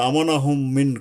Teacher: গুন্না হবে এবং বামের মিমকে তাসদিদ ধরে ইদগাম করে ইদগাম মানে মিলাইয়া পড়তে হবে ওই মিমের সাথে এই মিম মিলাইয়া পড়তে হবে এটাই হলো মূল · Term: ঈদগম